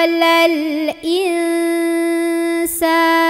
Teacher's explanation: nun itu bunyi an. Kalau ketemunya sama sin, bunyinya udah enggak an. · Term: ikhfa